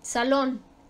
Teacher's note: su sílaba tónica está en lon la última sílaba